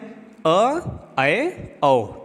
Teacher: अर्ध विवृत्त की बात करें तो इसमें विवृत से कम लेकिन अर्ध संवृत्त से ज्यादा मुख खुले रहते हैं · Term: अर्ध विवृत स्वर